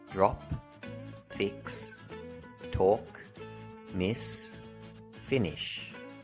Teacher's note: don't require vocal chords to produce them instead air flows freely you'll notice your vocal cords don't vibrate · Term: unvoiced consonant